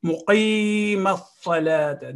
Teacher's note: مقي, this ya with a sukoon on it after qaf is ya of elongation. It will elongate the sound of qaf.